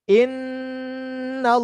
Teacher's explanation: makhraj yang berada di khayshum atau rongga hidung bagian dalam adalah tadi nun yang bertasydid.